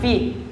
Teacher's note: bibir bawah menyentuh gigi seri atas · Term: huruf Fi